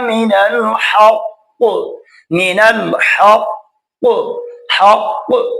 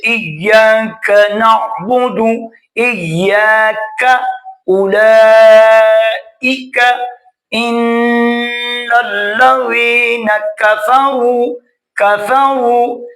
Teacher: قاف یہ زبان کی جڑ تالو کے نرم حصے سے، کاف زبان کی جڑ اور تالو کے سخت حصے سے ادا ہوگا